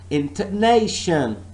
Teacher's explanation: I'm only stressing one part of this word, and I am saying and I'm pronouncing this word as intonation. The stress is on nay.